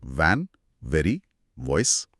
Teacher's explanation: सबसे पहले वी ध्वनि वी बोलते समय ना ऊपर के दांत नीचे वाले होंठ को छूने चाहिए और एक हल्की कंपन यानी वाइब्रेशन होनी चाहिए